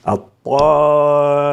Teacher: وكذلك الطاء، إن جاءت الألف بعد حرف الطاء لا نقول الطامة بل الطامة، كل من الطاء مفخمة والألف التي تلتها